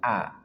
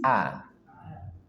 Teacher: hamzah dari pangkal tenggorokan a. Dan dia tarkik tipis a.